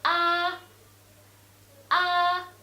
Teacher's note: the first tone in Chinese is flat tone